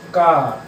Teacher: अब दूसरा वर्ण क्या है, आप ऐसे उच्चारण करिए का, तो थोड़ी वायु निकल इसके बाद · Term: अल्प प्राण